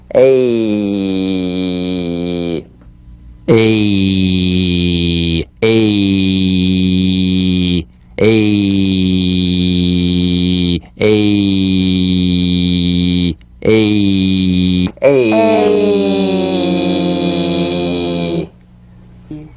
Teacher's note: two sounds blended into one it's e plus e a a emphasize the second sound which is the Y Buzz